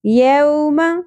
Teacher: یوم، واو لین، یعنی واو ساکن سے پہلے زبر آ گئی، نرمی سے ادا کرنا ہے. یو نہیں پڑھنا جیسے مجہول طریقے سے پڑھتے ہیں، وہ مجہول غلطی ہے.